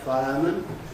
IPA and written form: ˋfaɪəmən (fireman)